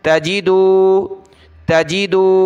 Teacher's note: واو پیش دو، تجیدو، اس کو آپ نے تجیدو نہیں پڑھنا، جیم کو کھینچیں گے نہیں، زیر ہے تو تھوڑا سا کھینچنا ہے